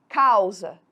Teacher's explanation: Pela boca, não sai nenhum som nasalado. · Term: ditongo oral